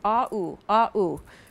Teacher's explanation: You have the ah first, don't you, on bounce, and then the ooh, ah ooh, ah ooh.